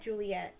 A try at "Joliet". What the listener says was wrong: Joliet. It's with the O.